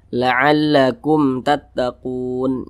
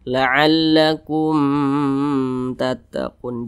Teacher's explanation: dia tidak berdengung tidak digunahkan jadi dibaca pendek saja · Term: izhar syafawi